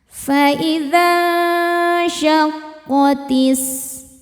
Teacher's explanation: Selanjutnya ada hukum ikhfa hakiki ausat karena nun sukun bertemu syin. Cara bacanya nun disamarkan ke syin disertai dengungan. Ya, dengung dan samarnya sama besar.